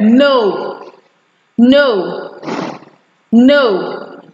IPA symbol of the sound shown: nəu